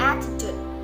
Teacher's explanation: attitude has three syllables and the secondary stressing on the third syllable